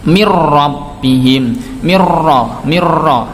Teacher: maka bacaan idgham bila gunnah dimasukkan ke huruf ra-nya